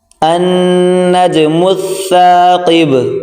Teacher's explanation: اس کو سا نہیں پڑھا جائے گا، ہلکی سی زبان باہر نکال کر پڑھیں گے۔